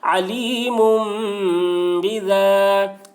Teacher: الف سے پہلے زبر ہے، الف مدہ ہوا، اس لیے الف مدہ کو ایک الف کے برابر کھینچ کر پڑھیں گے